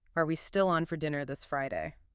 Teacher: It's the primary way we mark yes no questions in English. That rising pitch signals I expect a yes or no answer